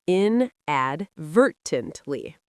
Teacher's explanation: inadvertently stresses the second syllable.